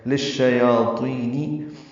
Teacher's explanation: یا کے اوپر کھڑا زبر 2 حرکات لمبا کریں گے